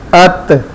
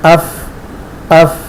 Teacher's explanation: تو اس میں جماؤ ہے ات، اور فا میں پھسلن ہے